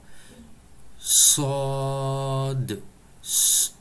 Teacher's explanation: Sod, c'est une lettre emphatique. Veut dire, nous faisons la bouche ronde quand nous prononçons. Et c'est une lettre épaisse.